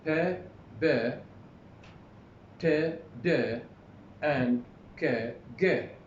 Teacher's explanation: Here, in all stop consonants, the breath is completely stopped. الهواء يتوقف.